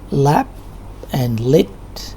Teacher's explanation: the air is let pass through the sides of the tongue, and we pronounce sound at the beginning of the words lap and lit